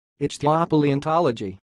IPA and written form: ɪk.θaɪ.oʊ.pɑː.liː.ɒn.tɒl.oʊ.dʒiː (Ichthyopaleontology)